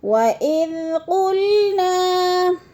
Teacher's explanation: الف خالی سے پہلے نون کے اوپر زبر آ گیا تو اس کو ایک الف دو حرکات کے برابر کھینچ کر پڑھنا ہے الف مدہ کو